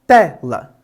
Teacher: Quando pensamos nas paroxítonas, pensamos na penúltima sílaba, como é o caso de tela. Temos duas sílabas nessa palavra e a primeira, ou seja, a penúltima, é aquela que é a mais forte da palavra, portanto ela é uma paroxítona.